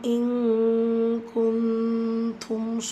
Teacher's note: நூனை பாதியாக மறைச்சி குன்னா செஞ்சு ஓதணும் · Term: இஃபா